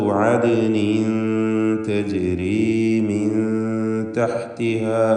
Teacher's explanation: ഇഖ്ഫ ഹഖീഖി, അവ്യക്തമാക്കി മണിച്ചുകൊണ്ടാണ് ഉച്ചരിക്കേണ്ടത് · ആദിൻ എന്ന് പറയുമ്പോൾ ദാലിന് ഖൽഖല സൂറ